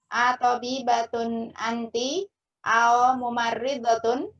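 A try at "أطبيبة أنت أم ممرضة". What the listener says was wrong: Am. dia syafatan bibir. Harus ditutup. Kalau nggak tertutup jadi au.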